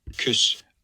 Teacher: It's U, that high front rounded vowel.